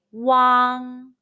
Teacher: ah by opening your mouth as wide as possible say wang be careful not to pronounce the g sound too much it's barely pronounced say wang now mimik the mouth shape in the video carefully